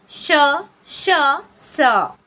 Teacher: श स यांना उष्मे किंवा घर्षक असे म्हणतात मुखावाटे जोराने उसा बाहेर टाकल्याप्रमाणे या वर्णांचा उच्चार होतो घर्ष होते · मुखावाटे जोराने उसासा बाहेर टाकल्याप्रमाणे या वर्णांचा उच्चार होतो. घर्षण होते. उच्चार करताना घर्षण होते आणि घर्षणामुळे उष्णता निर्माण होते.